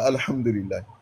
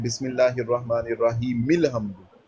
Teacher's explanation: ये जो मिल हमदु में हमने अलिफ वो हमज़ा छोड़ दिया ना, उस हमज़ा को जो छोड़ा था वो वसली था।